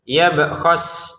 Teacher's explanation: B khas, kita memantulkan 'b', ya, yab khas.